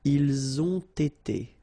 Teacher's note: first the liaison z, and then you get the t